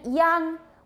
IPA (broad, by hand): jaŋ